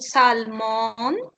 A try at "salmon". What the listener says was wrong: Salmon. They say salmon. They don't pronounce the L. They say salmon. It's right the same, but they don't pronounce the L. Salmon.